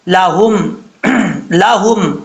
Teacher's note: हल्क वो वाला जो सीने की तरफ है इसलिए इसको भारी साउंड के साथ पढ़ा जाएगा